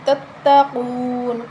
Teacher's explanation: قاف حروف مستعلیہ ہے، موٹی پڑھیں گے، واو مدہ ایک الف کے برابر لمبا کریں گے، نون وقف کی صورت میں ساکن ہو جائے گی، ٹھیک ہے۔